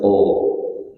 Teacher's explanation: dengan cara menaikkan pangkal lidah atau ditebalkan, maka bunyinya tebal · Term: huruf qaf